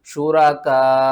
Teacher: بھی ختم ہو جائے گی، واو بھی ختم ہو جائے گی، آپ نے جسٹ حمزہ کو ساکن کرنا ہے اور کاف کو کھینچ کر حمزہ سے ملانا ہے، اور جب آپ حمزہ سے ملائیں گے تو جھٹکا دے کر پڑھیں گے